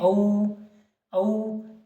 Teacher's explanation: तो 3 मात्रा जितना समय लग रहा है तो इसे कहेंगे प्लुत